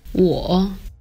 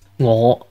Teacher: In Mandarin, it's pronounced 我 with the 3rd tone, or falling rising tone, while in Cantonese it's pronounced 我 with the 5th tone, or low rising tone. So the tone is different, but also notice that the initial consonant sound is different as well.